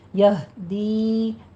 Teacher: یہدی دی میں یا مدہ ہے، 2 کاؤنٹ کرنے ہیں۔